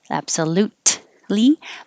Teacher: you don't have to say the t absolutely because you're going to the l position right afterwards so you're already ready